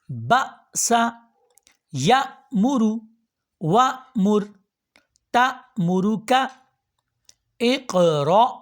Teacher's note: حمزہ پہ جہاں پہ بھی جزم آ رہی ہے اس کو جھٹکا دے کے پڑھیں گے